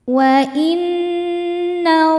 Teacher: Cara bacanya alifnya lewatin masuk langsung ke d atau disebut idgham syamsi.